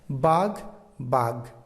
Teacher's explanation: শব্দের আদিতে মহাপ্রাণ ধ্বনি থাকলে তা শব্দের মধ্যে এবং শেষে অল্পপ্রাণ ধ্বনিতে পরিণত হয়